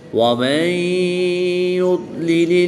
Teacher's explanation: نون ساکن کے بعد یا حروف یرملون میں سے ہے تو یہاں پر ادغام مع الغنہ ہوگا، یعنی غنہ کر کے پڑھیں گے